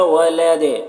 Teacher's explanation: ولد یہاں پر وقف کریں گے تو دال میں قلقلہ ہوگا